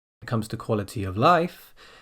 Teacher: here the intonation comes at the end of the dependent clause, where the down comes on quality of, and then the up comes on life.